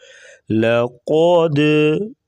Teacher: لقد لام کو بریک پڑھیں گے، قاف کو موٹا کریں گے، دال ساکن ہے یہاں پر قلقلہ ہوگا. لقد قلقلہ آواز کو تھوڑی سی ہلانا